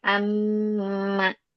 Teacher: mim bertasydid, nun bertasydid itu adalah gunah ya. Ditahan dia